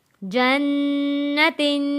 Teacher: جن، نون زبر نہ، جن، تا دو زیر تن، جنتن، نون تشدید والے پہ بھی غنہ ادا کیا اور تنوین پر بھی ہم نے غنہ ادا کیا. جب ہم تنوین کو یہاں آگے ہم وقف کریں گے، جنتن کو ہم نے وقف کرنا ہے تو دو زیر ختم ہو جائے گی اور یہاں پر جزم لگ جائے گا اور گول تا ہا میں بدل جائے گی.